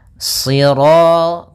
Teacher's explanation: karena shad itu pangkal lidah kita terangkat dan melekat karena dia huruf idbaq